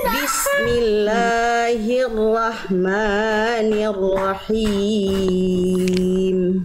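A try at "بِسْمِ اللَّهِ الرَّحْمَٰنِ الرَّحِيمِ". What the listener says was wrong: La dan ma-nya jangan kepanjangan ya Bunda ya, 2 harokat. Bismillahirrahmanirrahim. Bismillahirrahmanirrahim.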